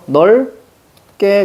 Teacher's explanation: 그러니까 넓게 해서 비읍이 탈락하는 겁니다. 자음군 단순화가 되고 나서 리을과 기역이 만나죠.